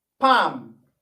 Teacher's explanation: while pronouncing that word, the L is not pronounced.